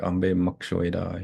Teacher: So this one, when you hear speakers say it, the reason why we have those, the B and the M together, is because speakers will hardly pronounce that B, like ambe makshweda, you won't even hear the B.